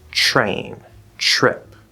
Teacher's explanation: There's an easier way, which is to actually, if you have a T plus R consonant, not vowel, then you can change the T into a ch, a CH sound.